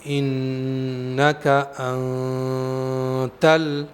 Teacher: نون کو میں نے ادا کیا تو زبان کی نوک مسوڑوں پر نہیں لگائی ہے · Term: اخفا